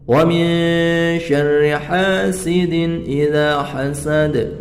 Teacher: Nun sukun bertemu shin, ikhfa haqiqi, yang mana harus dibaca dengan samar. Kemudian ro-nya ini harus dibaca tipis.